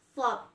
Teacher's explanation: Yang kedua, melafalkan huruf shad berbeda dengan melafalkan huruf sin ya. Huruf shad membacanya dengan bibir agak ke depan seperti hendak bersiul.